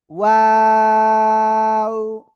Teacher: শুরুতেও 2 ঠোঁট গোল হবে, মাঝখানে 2 ঠোঁট 2 দিকে প্রসারিত হবে, শেষে এসে আবার 2 ঠোঁট গোল হবে